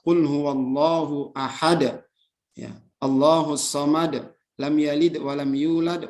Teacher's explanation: apabila huruf qalqalahnya itu berada di akhir, ya, dan dia berbaris mati karena diwakafkan, ya, diwakafkan, sehingga terjadilah pantulan yang besar dinamakan dengan qalqalah kubro.